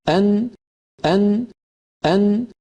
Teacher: زبان کا ابتدائی اوپر والا حصہ اپنے بالمقابل مسوڑوں کو جو لام کے مخرج سے تھوڑا سا نیچے ہے لگنا چاہیے، اور ساتھ ناک سے بھی آواز گزرے۔ یہ دونوں چیزیں مل کر نون کو تشکیل دیتے ہیں اور یہی نون کا مخرج ہے۔